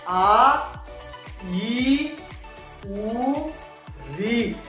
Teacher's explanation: ये 4 दीर्घ स्वर है जिन्हें द्विमात्रिक भी कहा जाता है, यानी इनके उच्चारण में 2 मात्राओं के उच्चारण का समय लगता है, इसलिए इन्हें द्विमात्रिक कहा जाता है।